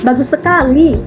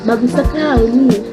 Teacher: di akhir nadanya lebih tinggi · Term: nada tinggi